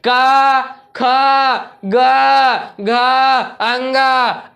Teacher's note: का वर्ग का उच्चारण स्थान कंठ से है।